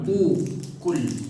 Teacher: Coba pastikan kof itu nggak boleh ada angin